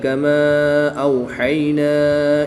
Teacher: الف مدہ کے بعد حمزہ دوسرے کلمے میں ہے تو یہاں پر مد منفصل ہوگی، 2 سے 3 الف تک کھینچ کر پڑھیں گے۔ واو ساکن سے پہلے حرف پر زبر ہے تو واو لین ہوگا، یا ساکن سے پہلے حرف پر زبر ہے تو یا لین ہوگا، ان دونوں کو بغیر لمبا کیے پڑھیں گے۔